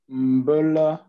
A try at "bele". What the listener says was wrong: C'est bele, pas mbele.